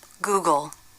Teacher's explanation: transcription of the word the last sound is the L so the L in Google is a dark l